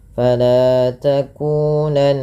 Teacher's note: Fala mad tabi'i, lanya 2 harakat, takunanna nun berharakat tasydid dibaca dengan gunnah. Cara membacanya dengan menahan bunyi suaranya.